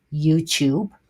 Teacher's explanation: the main stress is going to be in the first syllable